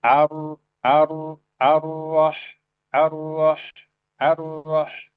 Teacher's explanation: ada ro itu berarti di mana tengah lidah kita itu kita cekungkan ke dalam ya. Kita cekungkan ke dalam. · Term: ro tebal